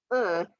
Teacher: mandarin has the sound uh it's an unrounded o